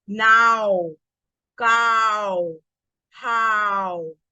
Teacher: when this W comes towards the end of the word, it mixes with the vowel sound